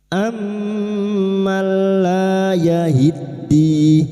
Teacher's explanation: lam alif dua harakat kita panjangkan mad thabi'i. La yahiddi yahid masuk pada huruf dal yang bertasdid.